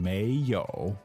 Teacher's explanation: so second tone third tone